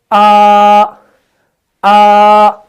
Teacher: بالکل سٹریٹ آواز جاری ہے، کہیں کوئی رکاوٹ نہیں ہے